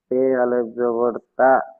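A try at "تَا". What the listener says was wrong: তে নয়, তা। আলিফ জাবার তা।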